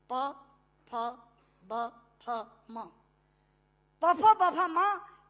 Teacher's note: प फ ब फ म दोनों होंठ मिलाकर बोले जा सकते हैं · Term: ओष्ठांग